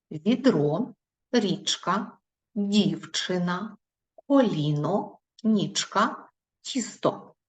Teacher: приголосні перед і вимовляються м'яко